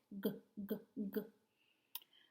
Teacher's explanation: So when I say that sound, my mouth is open, my tongue is down, my tongue is pushed back, and my voice is on. So when you touch your throat, you should feel it vibrate. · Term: G sound